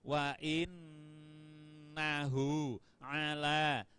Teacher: Ditahan pada nun, in itu ditahan agak lama.